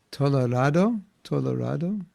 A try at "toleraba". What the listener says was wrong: Toleraba. With a B.